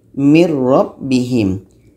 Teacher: Nun hilang masuk ke roh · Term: idgham bilagunnah